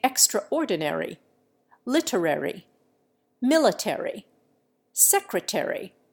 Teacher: An American sounds every syllable in extraordinary, literary, military, secretary, and the other words of the airy group. An Englishman never pronounces the A of the penultimate syllable.